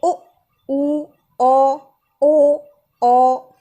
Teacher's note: हमारे जो होंठ हैं वो गोल हो रहे हैं, ये वृत्ताकार हैं